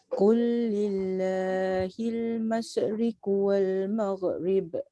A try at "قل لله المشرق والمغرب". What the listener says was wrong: Yang pertama shin, mash, dia tak boleh mash. Masyriq wal mag tu pun dia tak boleh bunyi mag. Qul lillahil masyriq wal maghrib. Dia kena slow and steady.